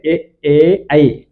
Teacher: ఈ మూడు కూడా కంఠతాలు అంటాడు కాబట్టి ఇవి కంఠ తాలవ్యాలు కంఠ తాలవ్యాలు కంఠము మరియు తాలవ్యము అంటే దవడ ఈ రెండిటిలతో సహాయంతో పలుకుతాం